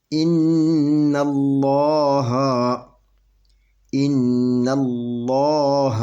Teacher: یہ نون مشدد کا، یہ نون مشدد ہے، تو یہاں پہ 2 حرکت کے برابر غنہ کریں گے، یہ نون مشدد کا غنہ ہوگا، 2 حرکت کے برابر اس کے اوپر غنہ کریں گے، اور نون ڈبل پڑھی جائے گی کیونکہ اس کے اوپر شاد ہے، اور اپنے مخرج میں سختی سے پڑھی جائے گی